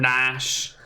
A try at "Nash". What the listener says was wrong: It's not Nash like Nash Bridges. It's Nash like Chan rearranged. N-A-C-H. Like Jackie Chan. Nash, Chan.